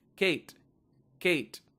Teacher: it is not aspirated